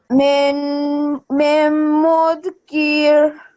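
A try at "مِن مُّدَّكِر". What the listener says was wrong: So you have made a mistake. You have said mim mudkir, but there is no sukoon on the da. There is a shad and a fatha. Mim mudakir.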